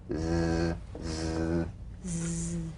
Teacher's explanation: The Z cognate S, a voiced S sound fricative. The tongue rim should gently touch the upper gum ridge. · The Z vibrates in that very small open space between the tongue and the upper teeth. Right in here.